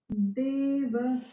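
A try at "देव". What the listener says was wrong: You are softening the de. So it is like both the swaras are coming almost close to each other. That's why I'm giving the punch. Deva. But give that punch.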